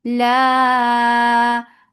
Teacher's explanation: mad munfasil jais, make it 4 counts long. Ow hamza sharp and lean, so make it soft when you are attaching fatha with waw.